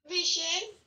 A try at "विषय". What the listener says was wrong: विषय, विषय में बेटा श पूरा, ओके।